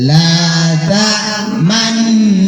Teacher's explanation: Dengung dulu baru moncong. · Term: ismam